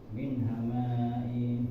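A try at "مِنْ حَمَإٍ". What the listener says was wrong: Nah, ma-nya enggak ada yang bikin panjang. Min. Kalau enggak langsung masuk ke in-nya.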